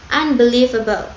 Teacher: fonem N-nya berubah menjadi fonem M karena pengaruh fonem B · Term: asimilasi fonemis